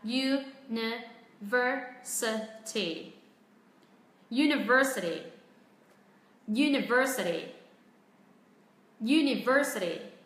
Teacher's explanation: Những âm tiết còn lại chúng ta sẽ đọc nó ngắn và thấp giọng xuống. · Trọng âm rơi vào âm ver, vậy chúng ta hãy xuống giọng những âm còn lại.